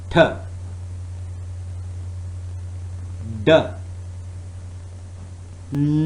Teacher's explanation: you can feel the tip of the tongue is touching the alveolar ridge, and that is the point where it is cutting off the airflow. Now in T and D, this means that there is no airflow at all for the duration of the stop.